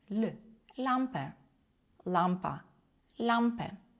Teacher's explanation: Літера Ль читається як звук ль. Це не твердий л, це не м'який ль, а посередині між ними ль. І язичок ми трошечки загортаємо.